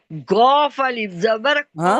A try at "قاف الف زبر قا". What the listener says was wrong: ہاں، گاف کہاں سے آ گیا؟